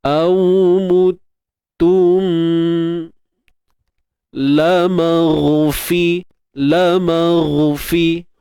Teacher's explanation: Huruf ghain kat hujung kerongkong. Itu makhraj dia.